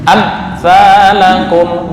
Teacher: Mim mati, ini mim mati bertemu sa. Bacaan apa? Idhar syafawi. Dengung apa enggak? Enggak. Tadi masih ada dengungnya ya.